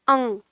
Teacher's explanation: जब हम बोलते हैं अंग, तो नाक में जो हमारे जाता है ध्वनि, तो वो ध्वनि ही इसका सही उच्चारण है। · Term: अनुस्वार